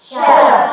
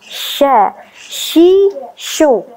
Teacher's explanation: tidak perlu memunyungkan bibir karena dia bukan huruf syafatain, bukan huruf yang keluar dari dua bibir. Dan dia adalah huruf yang tipis, senyum.